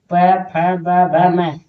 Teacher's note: ओठ से निकलने वाले वर्ण को क्या कहते हैं? ओठस्थ वर्ण।